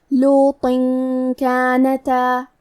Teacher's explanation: اخفاء کا معنی ہے چھپا دینا، تو ہم تنوین کو چھپاتے ہوئے اور غنہ کے ساتھ یہ حکم کو ادا کریں گے